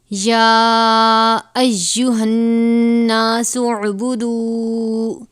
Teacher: نون مشدد ہے، یہاں پر غنہ کریں گے۔ یا ایہا الناس اعبدوا، دال واو پیش دو ہے، واو مدہ ہے، تھوڑا سا کھینچ کر پڑھیں گے۔